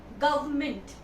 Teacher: The word is government. Here this R is silent.